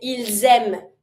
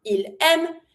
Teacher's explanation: If I do pronounce the S, ils aiment as a Z sound, that means it's plural.